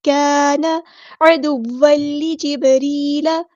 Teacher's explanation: عین کو وسطی ہے لیکن مڈل تھروٹ سے ادا کریں گے